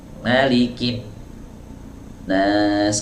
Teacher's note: Jadi nun ini sebenarnya punya dua makhraj. Ya, makhraj pertama itu ada di ujung lidah bertemu dengan gusi, itu makhraj pertama. Kemudian makhraj yang kedua ada di rongga hidung. Ya, kalau teman-teman mau buktikan, silahkan aja ditutup hidungnya.